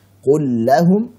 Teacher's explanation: Dibaca dengan idgham saat lam sukun pada fi'il bertemu dengan huruf lam dan ra.